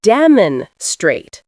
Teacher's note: It's demonstrate, with stress on the middle syllable.